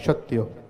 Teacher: સત્યનો સ બોલવો હોય તો જીભ તમારી દાંતે ટચ થાય